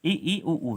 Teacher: समृत उन स्वर को कहा जाता है जिनके उच्चारण में हमारा मुखद्वार लगभग बंद रहता है